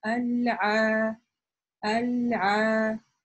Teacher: Если бы у нас только фатха была, было бы просто а, а мы еще и протягиваем ее, да, аль-а, аль-а. То есть тянем два харакета, время, за которое вы бы произнесли два раза а, да, а-а, аль-а, то есть такое же время. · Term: долгий алиф